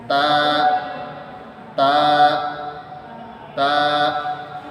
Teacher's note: উচ্চারণ করতে হবে জিহ্বার আগা উপরে দুই দাতের গোড়ার সাথে লাগিয়ে স্বাভাবিকভাবে বলতে হবে